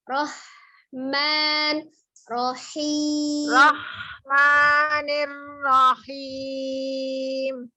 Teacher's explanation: hati-hati di huruf H tidak naik jadi kho ya